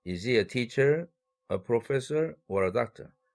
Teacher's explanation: 전부 올렸다 마지막에만 내리는 것이죠.